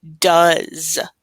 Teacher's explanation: we have kind of like a Z sound with that ES